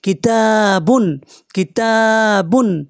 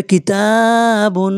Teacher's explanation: অক্ষর এসছে তানবিনের পরে এটি ইজহার হবে বিনা গুনায় পড়তে হবে বা দুপেশ বুনটা বিনা গুনায় পড়তে হবে